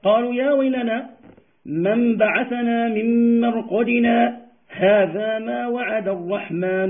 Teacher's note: لاحظتم وقفت أو سكتت عند الألف، سكتت عند الألف زمنا يسيرا ثم وصلت القراءة. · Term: السكت